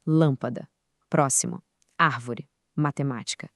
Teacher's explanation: as proparoxítonas, aquelas palavras com volume mais alto lá na antepenúltima sílaba